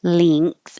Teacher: you're making the NG combination like sing and ring and thing. So the back of your tongue is very high. The other way is length, and now the N is in the front, and the vowel is going to change to an E because your tongue can stay lower.